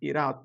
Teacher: bu ikisinin arasındaki t sesi yumuşatıldığı için akıcı bir geçiş sağlanmış diyor